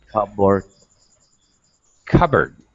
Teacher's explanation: we commonly don't even pronounce the p well it's very difficult if not impossible